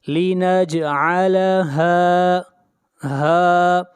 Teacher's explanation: ہا کو کھینچ کر پڑھیں گے اس لیے کہ یہاں پر الف مدہ ہے